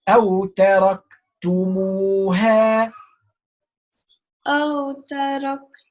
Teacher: It's not tabi'i because hamza after alif mad. I need to change it from 2 to 4.